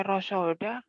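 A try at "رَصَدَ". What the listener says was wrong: Mulutnya dimonyong semua. Rosoda biasa aja, jangan ngosom ya. Rosoda jangan.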